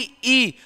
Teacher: ई ई बोलते तो कहां हमारा जो जीभ है स्पर्श करती है तालू को स्पर्श करती है